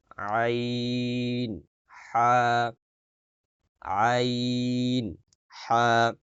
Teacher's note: হলকের মধ্যকান হইতে মানে গলার মাঝখান থেকে